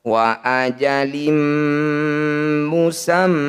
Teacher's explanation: Kasrah tanwin bertemu mim disebut bacaan idgham bi gunnah. Bunyi kasrah tanwinnya masukkan pada mim, bibir langsung rapat, dengungkan 2 harokat. · Wa ajalim musamman, mim bertasydid disebut bacaan gunnah musyaddadah. Bunyi mim harus didengungkan atau ditahan 2 ketukan.